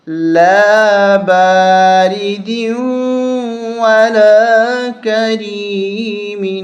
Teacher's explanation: یہاں ہم غنہ کریں گے، دال کو واو سے ملاتے ہوئے غنہ کریں گے۔ یہاں واو کے اوپر تشدید ہے، سختی کے ساتھ بھی اس کو دبا کے سختی کے ساتھ پڑھیں گے۔